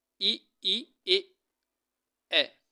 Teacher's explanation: तो जीवा है ना आगे दांतों को छू रही है, तो इसीलिए ना अग्रस्वर बोलते हैं